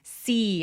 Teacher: See see 할 때 e 소리 길게 또렷하게 내 주세요.